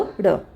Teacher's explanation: जिनके उच्चारण में जीभ ऊपर उठकर झटके से नीचे आए उसे क्या कहा जाता है, उत्क्षिप्त। ये 2 होते हैं ड़, ठीक है।